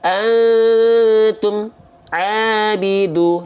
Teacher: jangan sampai mim dilafalkan terputus suara bunyi amnya. Jadi antara bunyi am dengan bunyi a nggak boleh ada jeda hening. Jadi nggak boleh ada berhenti. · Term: izhar syafawi